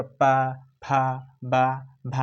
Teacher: ओठ से उच्चारण होता है पा वर्ग पूरा, जिसे बोलेगा पा, फा, बा, भा, यानी ओठ से उच्चारण होता है।